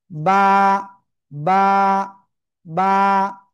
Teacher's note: উচ্চারণ করব দুই ঠোঁটের ভিজা অংশ থেকে।